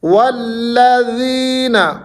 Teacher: یہاں پر لام مشدد ہے، تھوڑی سی شدت سے پڑھنا ہے، اس کو تھوڑی سی سختی کرنی ہے.